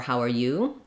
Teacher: one reduction that we typically do in english is that r can become er